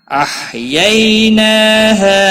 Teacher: نا کے اوپر کھڑی زبر ہے، ایک الف کے برابر کھینچ کر پڑھیں گے